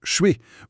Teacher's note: L'exemple typique, c'est le fameux «je suis», qui dans la conversation rapide devient souvent «choué»